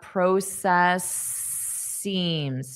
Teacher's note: So if we have an S, we're just going to continue out that sound.